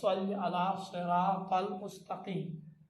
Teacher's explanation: سین کو تھوڑا موٹا تلفظ کرو تو وہ صاد بن جاتا ہے